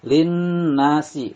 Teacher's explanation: Lin nasi, lin di sini nunnya bersidah dinamakan gunah musyaddadah, ditahan 2 harokat. Lin nasi, na dibaca panjang karena fathah bertemu dengan alif